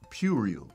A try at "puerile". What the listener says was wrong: Puerile. You say you're saying I'll at the end and it's ill. So you're saying rile. You're saying it like so, rile. It's puerile. Think P-Y-O-O and then pure.